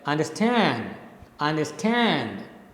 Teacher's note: the last syllable is stressed, the first two are unstressed. So you speak it like understand, understand, right? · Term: anapest